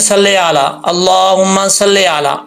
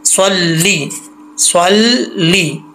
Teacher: लाम के नीचे ज़ेर है, लाम ज़ेर ली होता है, ले नहीं होता